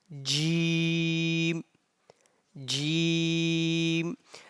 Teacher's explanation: the sound of jim comes from the middle of the tongue and middle of the pallet